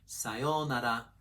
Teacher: Pitch accent pro tip. Start low and then continue high. Again, in casual conversation, you can ignore the final drop in pitch.